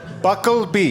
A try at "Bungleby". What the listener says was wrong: There is no K. It is a bungle.